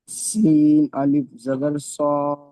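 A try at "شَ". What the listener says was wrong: এটা সিন নাই, শিন। শিন আলিফ জাবার শা। স হবে শিন আলিফ জাবার শা।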